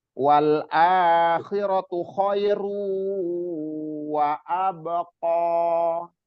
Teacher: khairu ditahan di situ digunnahkan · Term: idgham bi gunnah